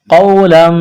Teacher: واو ساکن سے پہلے زبر ہے، واو لین ہے، بغیر کھینچ کے پڑھنا ہے